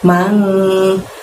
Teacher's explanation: ada nun mati di sana, maka dibaca samar dan dengung selama 2 harokat